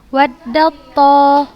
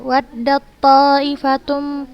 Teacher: Jadi kita bacanya langsung ke huruf to yang berharokat.